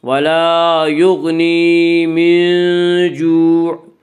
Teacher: من جو میں اخفاء حقیقی ہوگا۔